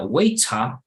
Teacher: En inglés británico sería waiter, de plano no suena la R, perfect, ¿ok?